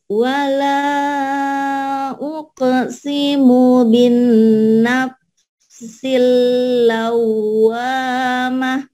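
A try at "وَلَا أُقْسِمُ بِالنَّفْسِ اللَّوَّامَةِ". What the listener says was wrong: Suara ibu sudah indah, cuman masih ada ke hidung ya. Ke hidungnya dikurangin. Tapi ke hidungnya agak kurangin ya. Wala uqsimu bin nafsil lawamah.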